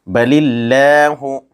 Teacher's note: بل اللہ، یا ساکن سے پہلے زیر ہے، اس لیے یا مدہ ہوگا، یہاں لفظ اللہ کے لام سے پہلے زیر ہے، اس لیے لفظ اللہ کے لام کو باریک پڑھیں گے